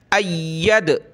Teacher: یا کو ہم نے سخت کرنا ہے تشدید کی وجہ سے، اور دال پہ قلقلہ کرنا ہے